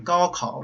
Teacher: for the G and K in 高 考, your tongue actually touches the roof of your mouth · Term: velar sounds